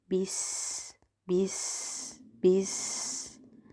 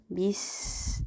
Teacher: Xo'p, undan keyingi harfimiz sin harfi sukunli holatda kelyapti. Demak, sin harfimizga rohavaq zamonini berib, ko'proq ushlab talaffuz qilamiz. Havosini chiqaramiz. Sofirini eshittiramiz. Va til bilan tanglay orasida qamamaymiz.